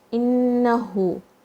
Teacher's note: Innahu, Hamza has a kasra, and noon shadda, strong gunna. You're going to touch the tongue to the makhraj of noon on your palate, and just press for a moment. Innahu, 2 counts here as well.